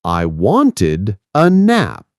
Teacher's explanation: In words like wanted, the ed makes its own little syllable like itid.